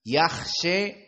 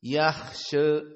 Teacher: yaksya dibaca dalam keadaan taklil bukan al-fathah seperti jumhur